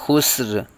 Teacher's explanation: ایک الف تک کھینچیں گے اور خوا کو پر پڑے گا، سین پہ آواز ہلے گی نہیں، سین پہ سیٹی کی طرح تیز آواز نکالیں گے ، خسر، اور را کو ساکن کریں گے وقف کی وجہ